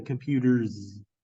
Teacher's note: this s sounds like a z and so therefore the Z is the fricative